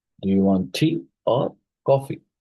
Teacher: the pitch rises on the first item to indicate that more options are coming. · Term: choice question